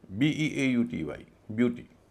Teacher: EAU का उच्चारण यू हो रहा है, यू दीर्घ स्वर है, इसलिए यू के ठीक बाद शब्द बटेगा।